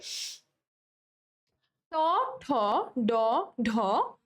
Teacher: যেসব ব্যঞ্জনধ্বনি উচ্চারণের সময় জিভের ডগা মূর্ধার সঙ্গে লেগে বায়ুপথে বাধা সৃষ্টি করে সেগুলোকে মূর্ধন্য ব্যঞ্জন বলে।